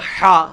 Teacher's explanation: جو حلوائی والی حا ہے وہ عربی میں حا حلق سے نکلتی ہے